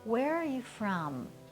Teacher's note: we're going to go down with our tone and have a falling intonation. So this would be in the case of a question like, where are you from?